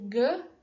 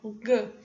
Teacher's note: a nossa língua se direciona lá para o lado do Véu palatino lá atrás nosso trato articulatório ogã então a nasalização vai ocorrer aproveitando esse ponto de articulação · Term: produção velar